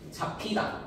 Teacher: 비읍하고 히읗이 만나요. 비읍하고 히읗이 결합하게 됩니다. 그러면 피읍으로 바뀌겠죠. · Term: 역행적 유기음화